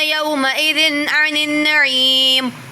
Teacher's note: یومئذ تنوین کے بعد عین آ رہا ہے تو اظہار ہو رہا ہے